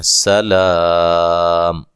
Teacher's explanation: وقف کی صورت میں آپ لا پہ بڑی مد کے ساتھ وقف کر سکتے ہیں